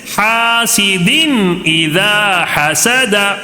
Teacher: اب پھر دوسرا بغیر غنہ کے حاسدین اذا حسد، حاسدین، یہاں پہ غنہ بالکل نہیں کرنا، حاسدین کر کے غنہ نہیں کرنا ہے، بلکہ جلدی پڑھنا